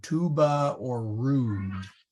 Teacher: the long U is more like an oo, tuba or rude.